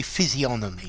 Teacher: To me as a Brit, the G is silent. However, I have heard Americans physiognomy with the G pronounced, but I would say physiognomy.